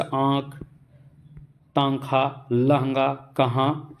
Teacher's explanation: हवा जो है मुंह और नाक दोनों से होकर बाहर निकलती है तो वहां पर अनुनासिक होता है